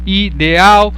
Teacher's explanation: Ideal é um exemplo de hiato. Perceba que o E e o A são 2 vogais juntas, mas que estão em sílabas diferentes.